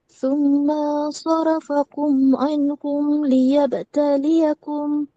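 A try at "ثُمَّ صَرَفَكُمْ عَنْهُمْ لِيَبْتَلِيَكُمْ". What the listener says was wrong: Thumma, ma pendek. Thumma sarafakum.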